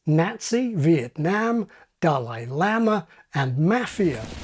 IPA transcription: Næzi, Vietnæm, Dalai Læma and Mæfia